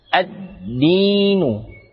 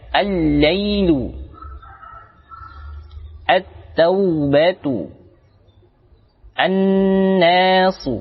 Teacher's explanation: Pada bacaan alif lam bertemu huruf dal, maka di sini langsung melebur pada huruf dalnya. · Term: alif lam syamsiyah